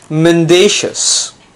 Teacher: notice the stress is on the second syllable it's not man - as its mendacious if it refers to